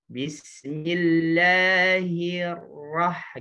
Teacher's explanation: Ketika ra kedua samar. Hir pertama digetarin, ra kedua disamarkan. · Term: wa akhfi takriran